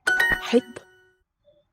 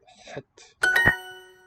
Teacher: the raspy H and an emphatic T